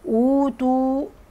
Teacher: اوتوا هنا عندي واو وقبليها همزه بقول عليه مد بدل